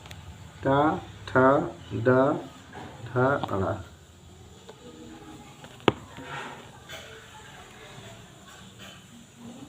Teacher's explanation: इनका उच्चारण स्थान मूर्धा या मूर्धन्य होता है